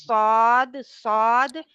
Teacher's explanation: पीछे से जुबान ऊपर उठी होती है, जी फिर मोटा आता है